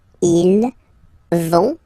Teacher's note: so ils vont, final T not pronounced